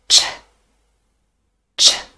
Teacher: Unvoiced, it's voiceless, no vocal cords vibrate